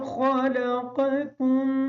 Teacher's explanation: خا کو موٹا پڑھیں گے، قاف کو موٹا پڑھیں گے، دوسرا کاف جو ہے اس کو باریک پڑھیں گے